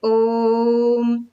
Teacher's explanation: यानी ह्रस्व स्वर को बोलने के लिए मान लीजिए कि हमें 1 क्षण का समय लगता है, तो प्लुत स्वर के उच्चारण में हमें 3 गुना समय लगेगा।